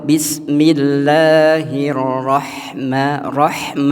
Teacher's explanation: ha itu letaknya di tengah tenggorokan ya